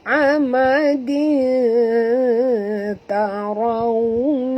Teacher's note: Okay, tanwin baris dua bawah bertemu dengan ta. Kita kena masukkan bunyi tanwin ke dalam ta disertai dengung dua harakat ya. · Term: Ikhfa haqiqi